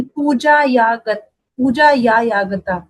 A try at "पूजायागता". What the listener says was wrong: पूजा या गता, second option पूजा या गता है, डबल या नहीं है, डबल।